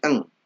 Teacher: Kita menggunakan metode Syafi'i maka menjadi ang ya. Nun mati ketemu kaf maka dibaca menjadi ang. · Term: ikhfa